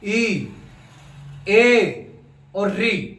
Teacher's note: इन सब से आगे वाला हिस्सा काम आ रहा है जीभ का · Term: अग्र स्वर